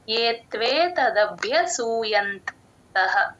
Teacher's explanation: భ కింద మహాప్రాణం య వత్తు రెండు వినపడాలండి